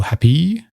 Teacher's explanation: It doesn't matter if you tense the vowel at the end of happy as most of us do